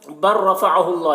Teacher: बर रफ़अहुल्लाह, यहाँ पर देखिए लाम जो है रा के साथ मुदगम हो जा रहा है